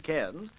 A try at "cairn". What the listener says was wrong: Cairn, you idiot, not can.